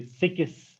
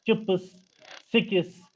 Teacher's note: And how it creeps in, we say sikis, k and s, in between we insert a vowel